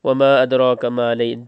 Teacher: دال پہ کلکلا کریں گے، قاف کو باریک پڑھیں گے.